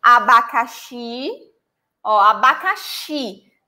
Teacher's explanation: The stress syllable is the last one.